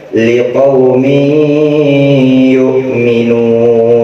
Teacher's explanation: Jadi tanwinnya langsung masuk ke dalam huruf ya, dan harus dibaca dengan idgham diguna atau dengung.